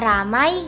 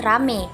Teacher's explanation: perubahan dua bunyi vokal atau vokal rangkap diftong menjadi vokal tunggal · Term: monoptongisasi, Monoftongisasi